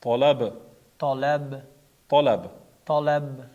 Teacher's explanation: To qalqala harfi fatha bo'lgani uchun qalqala qilinmaydi. B qalqala harfi sukun bo'lgani uchun tolab. Qalqala qilinadi.